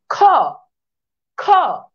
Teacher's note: খ যখন উচ্চারণ করে তখন বাতাসের প্রবণতা বেশ মহাপ্রাণ